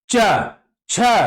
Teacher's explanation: जीभ का आगे और मध्य का जो भाग होता है वो ऊपर की ओर उठता है और तालू में जाकर के सट है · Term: च वर्ग